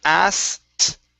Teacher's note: go straight to a T sound. Take out the K, and it's asked, asked.